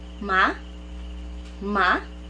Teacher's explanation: the second tone is a rising tone